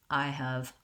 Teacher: You can see in I have a different vowel and I have the H sound there.